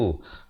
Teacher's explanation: zal berbaris dhammah di hujung lidah